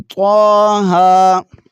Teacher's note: تو کو موٹا پڑھیں گے، ہا کو باریک پڑھیں گے اور ایک الف کی مقدار ہی کھینچیں گے